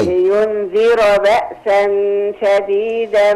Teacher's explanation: ينذر فخم الراء شويه